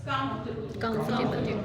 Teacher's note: थोड़ा सा स्क्वीज करिए, कम पे स्ट्रेस दीजिए